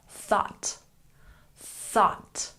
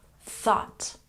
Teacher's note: make sure that you really stick your tongue between your teeth when you say thought